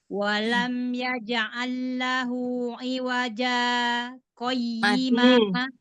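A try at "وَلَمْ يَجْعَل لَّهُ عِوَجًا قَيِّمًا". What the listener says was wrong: Iya, jimnya sudah betul tadi pengucapannya, qalqalahnya. Tapi Ibu kurang lama berhentinya. Iwaja qayyima. Jangan langsung baca lagi. Berarti Ibu PR-nya di jim yang qalqalah ya, jim yang sukun maksud saya ya.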